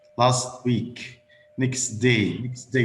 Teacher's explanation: we don't pronounce the t at the final position okay if it's also followed by a consonant sound after that